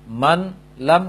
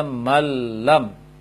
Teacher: nun sukun digabung secara sempurna ke dalam lam, sehingga ini yang dibaca adalah lam bertasydid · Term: idgham kamil